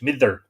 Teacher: you pronounce the d in the middle of two slender vowels like that like a th